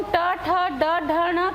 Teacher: जिह्वा का अग्र का हिस्सा हल्का सा मुड़ जाता है और थोड़ा पीछे की ओर जाता है और ऊपर कुछ ठोक रहा है ऐसे महसूस होता है तो नाक के नीचे को वो ठोकता है।